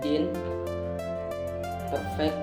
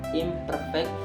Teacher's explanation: prefix in berubah menjadi im karena pengaruh bunyi P pada kata perfect.